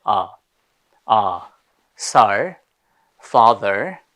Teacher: very relaxed, এটা একেবারে সামনে থেকে বলতে হবে আ